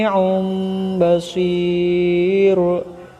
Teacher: hukum bacaannya disebut dengan ia klub Adapun cara membacanya yaitu Hai bunyi huruf nun atau tanwin ketika itu dibalik atau ditukar menjadi Bunyi huruf mim · Tanwin bertemu dengan huruf iqlab yakni ba, maka bunyi tanwin tersebut diganti dengan bunyi mim.